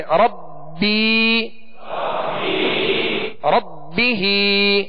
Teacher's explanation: تو یا مدہ ہے، ایک الف کی مقدار میں کھینچ کر پڑھیں گے